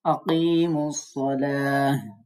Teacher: গোলতা মিলিয়ে পড়ার সময় আমরা তাই পড়ব। তবে যখন শব্দের শেষে গোলতা হবে, ওয়াকফের সময় তাকে হা সাকিন পড়তে হবে। আকিমুস সালাতা, আমরা তার সব বাদ, এখানে সবকিছু বাদ দিয়ে হা একটা সাকিন দিয়ে পড়তে হবে।